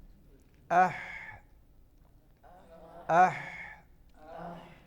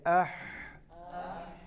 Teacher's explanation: اس میں آواز اور سانس جاری رہتا ہے. جب آپ ہا کو اور ہا کو ساکن کریں گے آواز اور سانس اح اح.